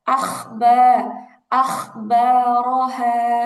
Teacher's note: গলার মধ্যে এক ধরনের খসখস আওয়াজ হবে